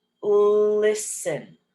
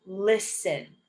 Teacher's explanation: even though it's an S and a T, we pronounce it as just an S.